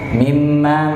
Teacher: Nun atau mim yang bertasdid namanya gunah maka perlu kita tahan sama-sama in in dan gunah itu makhrajnya diumemang masuk agak ke hidung